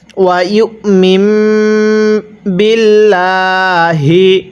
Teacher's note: হ্যাঁ এই মিমের মধ্যে আমরা গুন্নাহ করব, কারণ যদি শব্দের মাঝখানে এরকম নুন সাকিনের উপরে একটি ছোট্ট মিম থাকে তাহলে সেই মিমটিকে আমাদের অবশ্যই গুন্নাহ করে পড়তে হবে, কারণ মিম সাকিনের পরে বা থাকলে সেখানে গুন্নাহ করে পড়তে হয়।